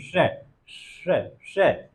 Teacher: जब वहां स्पर्श कर रही है तो जो वायु निकल रही है वो अवरुद्ध हो रही है, तो जैसे निकल रही है सीटी लग रही हो, श, श, श, इस तरह की ध्वनि आ रही है। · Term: तालव्य ध्वनि